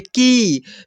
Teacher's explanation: बड़ी वाला इ का मात्रा लगा हुआ है क में तो इसको थोड़ा खींच करके उच्चारण करेंगे